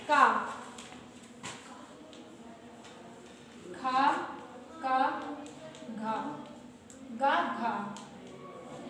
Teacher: थोड़ा सा गला अंदर की ओर होके इसे का बोलेंगे, जीभ अंदर की ओर जाएगी गले कंठ की तरफ